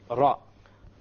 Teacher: The gums meaning the area behind the teeth. So you use the tip of the tongue and you place it close to the gums of the upper teeth, and from this one letter comes, and that is the letter Ra.